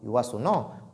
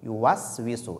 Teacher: Ne pas mettre la dhamma sur la lettre as-sin. Car ici, sin porte sukun.